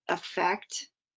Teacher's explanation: The word effect, the schwa is the first sound again